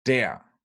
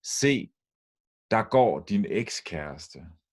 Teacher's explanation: when der is stressed, it's pronounced der. And when it's not, which is often the case, it's pronounced da.